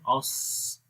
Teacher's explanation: سانس جاری ہوگا، آواز بھی جاری ہوگی. رخاوت جیسے اوس. · زبان کا درمیان والا حصہ اتنا اوپر اٹھ جاتا ہے کہ یوں محسوس ہوتا ہے کہ وہ اوپر تالو کے ساتھ مل رہا ہے. اس وجہ سے اس اطباق بولتے ہیں.